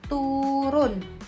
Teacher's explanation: vokal U tinggi bawah belakang dengan kondisi bibir semi tertutup